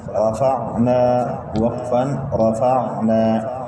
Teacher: کلمہ کے آخری حرف پر الف مدہ ہے، وقف میں کوئی تبدیلی نہیں آئے گی. را کے اوپر زبر ہے، را کو موٹا پڑھیں گے.